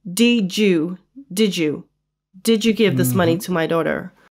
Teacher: So the D sound, the D in did, and the Y in you, basically form a J sound. So what you hear is basically, did you give this money to my daughter? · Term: elision